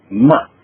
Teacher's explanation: Y el cuarto carácter, ma, es descendente